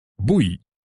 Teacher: So what likely happened here is that the final syllable, the y part, was dropped at the end. And when that happened, the last vowel was the e sound.